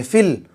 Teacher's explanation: یا کو نہیں پڑھیں گے، الف کو نہیں پڑھیں گے، لام کو فا سے ملائیں گے